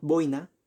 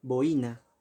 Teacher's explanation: Si nosotros pronunciáramos boina, sería un diptongo, pero se pronuncia boina, y es por ello que la intensidad está en la vocal cerrada y se separa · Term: Hiato